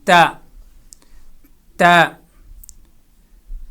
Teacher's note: اسی طرح اگلا لیٹر جو ہے وہ تا ہے، تو تا کو ادا کرتے وقت زبان کا کونا اور اوپر زبان کی نوک کو اوپر والے دانتوں کی بیک سائڈ پہ لگائیں گے تو وہاں سے تا ادا ہوگی